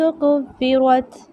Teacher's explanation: پہ کاف باریک روا موٹا پڑھیں گے